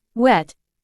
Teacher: the lips are rounded and the back of the tongue is raised towards the soft pallet creating a narrowing in the vocal tract however the air flow is not completely blocked allowing for a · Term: approximate